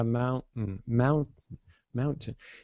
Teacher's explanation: I'm going with the T but I'm holding it